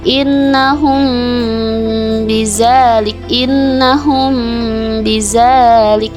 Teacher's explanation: tajwid yang terjadi ketika hukum mim mati bertemu dengan huruf ba hukum ikhlas syafawi ini tetap wajib dibaca dengan dengung sekitar 2 sampai 3 harokat atau satu setengah kali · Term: Ikhfa Syafawi